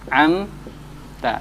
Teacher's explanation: Ain dengan mim, mim keluarnya di bibir, ain keluarnya di pangkal tenggorokan. Ini jauh sekali, ya.